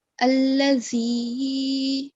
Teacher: Zal has a hissing sound. There's vibration in the sound.